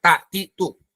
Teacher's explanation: Nggak ada ketebalan, nggak berat, ringan ta itu. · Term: istifal